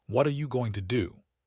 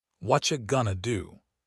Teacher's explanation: What are you becomes whatcha, going to becomes gonna. The sounds blur together, syllables disappear, everything flows as one smooth unit. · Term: sound clusters